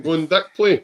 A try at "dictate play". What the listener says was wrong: No, you said dick.